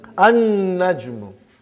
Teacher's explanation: You did not pronounce lam because noon is a shamsi, sun letter.